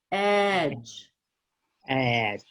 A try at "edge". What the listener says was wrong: See how your lips are going like this? Edge. You're working too hard. You need to like make your cheeks go to sleep. So what you want to remember is if you work that short E before a voiced consonant too hard, you're going to change it into a long A. It's going to get too tense. So you don't want to work it harder.